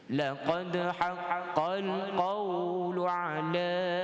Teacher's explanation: Jadi tuan-tuan kita baca qal, idgham masuk tanpa dengung.